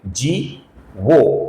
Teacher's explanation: इसका सही उच्चारण है लंबाई के साथ जीवः। जीवः का जो विसर्ग है, इसके आगे विनयिता का वो आने के कारण इस विसर्ग का ओ होता है। उच्चारण हम ओ ऐसा करते हैं, इसलिए इसका उच्चारण हम करेंगे जी वो।